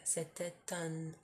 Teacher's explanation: you pronounce the T because it's followed by a vowel. Okay, that's a liaison.